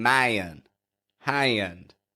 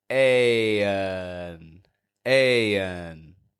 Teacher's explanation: the sound ah softens its position because it's transitioning to that n and so we don't get ion which uses a static stronger